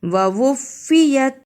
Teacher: ووفیت شد کو بھی ادا کرنا ہے اور فا کو جلدی بھی پڑھنا ہے